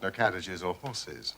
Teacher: use a kit vowel ending, so it's more like the word is spelled Horsiz and not Horses